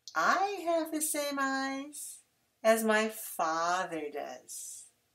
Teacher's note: don't stress the auxiliary in fact stress father